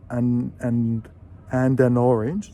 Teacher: the D of and joins the A of an